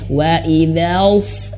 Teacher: ketika masuk ke huruf shod pangkal lidah langsung naik